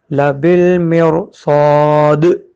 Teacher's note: دال پہ سے زیر ختم ہو گیا، جزم آ گیا، دال پہ کلکلا کریں گے